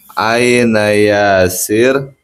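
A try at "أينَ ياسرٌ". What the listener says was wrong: Harus lengkap. Harokat harus lengkap, jangan yasir. Dijasem. Jangan lupa ya dilengkapi. Jangan dijasem. Kalau jasem nggak tahu itu mubtada khobar apa itu kan nggak tahu. Nah, jangan hanya yasir, sa'ah itu jangan ya. Harus lengkap pemula. Namanya belajar ya harus tahu harokatnya apa.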